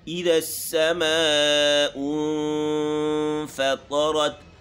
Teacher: فا کا جو مخرج ہے اوپر کے دو دانتوں کو ہونٹوں کے تری والے حصے پر لگانا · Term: اخفا